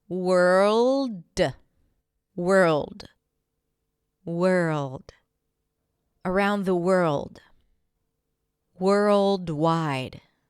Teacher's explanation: Bring the tongue to touch the upper pallet and make sure it's an L sound before you pop it to a D.